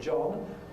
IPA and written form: ʤɒn (John)